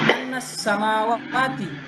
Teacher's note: ketika huruf nun bertemu dengan sin, maka dibacanya jelas tanpa ada penyembunyian suara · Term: izhar